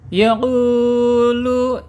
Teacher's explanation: makhrajnya lewat rongga tenggorokan sampai mulut saja ya. Tidak boleh masuk ke hidung. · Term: al-jaub